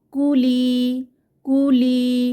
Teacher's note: লাইনে কুলি এখানে কু কু এর উপরে পেশ বা দম্মাহ আছে লি এখানে ইয়ামাদ এক আলিফ টেনে পড়বো